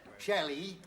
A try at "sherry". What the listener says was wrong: No, sherry. No, sherry. You're saying Shelley.